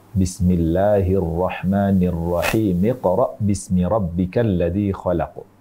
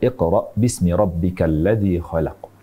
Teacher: kita menyambung antara Basmalah Bismillahir ahmanirrahim dengan permulaan surah al-alaq ini maka kita tidak membaca hamzatul wasal di permulaannya sehingga kita baca Bismillahirrahmanirrahim Iqra bismiabbikalladzi khalaq jadi langsung arrahmanirrahim miqra